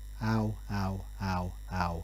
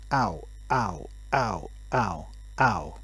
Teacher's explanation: listen to the word ow first repeated without a glottal stop and then with a glottal stop so first without how how how how and then with ow